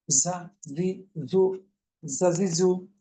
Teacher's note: তাহলে প্রথমে যে জা কে জিজ্ঞেস করি কোথা হতে, জিহ্বার আগাটা নিচের দাঁতের পেটো আগার সঙ্গে লাগিয়ে, কিভাবে? পাতলা মৌমাছির আওয়াজ